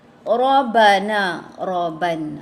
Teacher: So ra di sini tebal ya, sifatnya tafkhim.